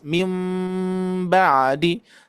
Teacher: seperti nempel tapi masih terasa bergetar di bibir gitu ya. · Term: iltimas